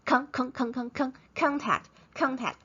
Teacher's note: the o is no longer the schwa instead it's contact contact but um in the later in